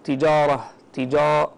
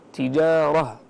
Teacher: اللهو ومن التجاره احيانا نسمع بعض الطلاب يقراون يقول تجاره تجاره فخم الجيم والالف التي بعدها بسبب الراء التي فخمت من بعد لكن الصواب ان يعطي كل واحد من هذه الحروف حقه تجاره